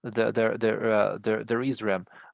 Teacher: So the key when we are using to be is the intonation. So we would raise our intonation in the verb to be.